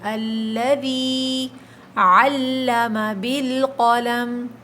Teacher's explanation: علم میں لام کے اوپر تشدید ہے، سختی کریے